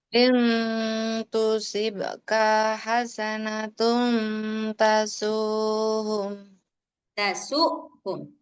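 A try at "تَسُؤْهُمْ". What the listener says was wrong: Ada hamzah nih. Tasuhum. Jadi kadang terbaca jelas.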